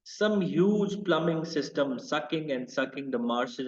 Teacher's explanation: sibilance combines with k sounds to convey the splashing and spongy world of the marshes